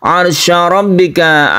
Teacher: sukun ro sebelumnya ada fathah maka kita sebut dengan ro yang tebal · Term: ro tafkim